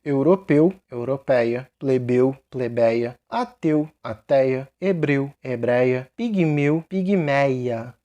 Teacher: Lembrando, esse ei é aberto, não é fechado. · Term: ditongo aberto